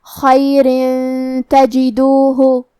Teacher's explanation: یہاں حکم ہے اخفاء تو ہم یہ حکم کو غنہ کے ساتھ ادا کریں گے